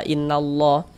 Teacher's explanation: huruf lam jalalahnya itu kita baca tabkhim, kita baca tebal